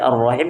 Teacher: meleburkan huruf lamnya di huruf setelahnya makanya dibacanya ar masuk di huruf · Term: alif lam syamsiyah